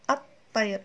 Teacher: هنا لا تلفظ اللام وتدغم مع الحرف الأول من الاسم الذي أضيفت إليه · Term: الإدغام الشمسي